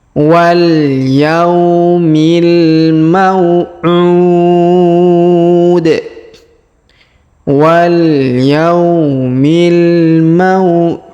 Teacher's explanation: Karena di depannya terdapat waw sukun sebelum huruf pemberhentiannya. Dan huruf pemberhentian di ujung ini huruf di kita sukunkan sehingga kita baca pantul ya, atau kita qalqalahkan